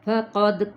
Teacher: فقد یہاں پہ دال پہ قلقلہ